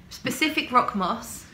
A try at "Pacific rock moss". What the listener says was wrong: Pacific rock moss, not specific oak moss. like the ocean.